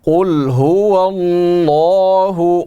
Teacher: قاف موٹے حروف میں سے ہے, اس کو پر کر کے پڑھیں گے